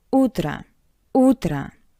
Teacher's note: in these two words o sounds like a because it's unstressed